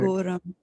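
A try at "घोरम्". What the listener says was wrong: Ghoram. Yeah, there's a H here, like in ghoda. Ghoda. It is not go as in goat. It is gho, right? Ghoram.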